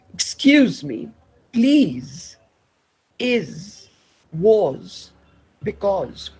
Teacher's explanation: When you say z, it is alveolar. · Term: z sound